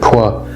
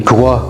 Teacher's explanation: The hard K with a W sound after it, qua, this became gwa gradually in Germanic, and then the G was dropped off and then it was a hua with an H sound in front of it, like the word what, who.